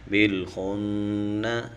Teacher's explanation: نون کے اوپر شد ہے تو اس پر غنہ کریں گے